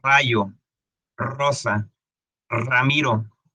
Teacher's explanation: La R, la R, nosotros tenemos un sonido vibrante